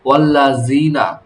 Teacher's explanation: জিহবার আগা সামনের উপরে দুই দাঁতের আগার সঙ্গে লাগিয়ে জালের মাখরাজ